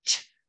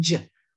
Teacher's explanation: We're going to add voicing. Say ch with your voice box on, and that becomes j. Voice box off, ch.